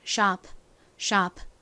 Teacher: 그리고 끝에 피읍 소리는요. 천천히 발음하면 sharp, sharp 이렇게 피 소리가 살짝 들리긴 하지만 보통 빠르게 이야기를 할 때는 잘 들리지 않아요. 그래서 마치 받침처럼 소리가 나게 됩니다.